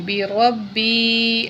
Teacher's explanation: را کو موٹا کر کے پڑھیں گے اور یہاں جو ہے با کے اوپر تشدید ہے، با کو سختی سے پڑھیں گے